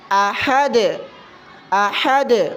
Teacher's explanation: دال پر جب ہم وقف کرتے ہیں تو تھوڑی سی حرکت دیتے ہیں، اس کو قلقلہ کہتے ہیں